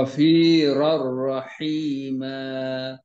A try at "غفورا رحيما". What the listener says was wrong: Ghafur, bukan Ghafi, Ghafur. Itu ayat.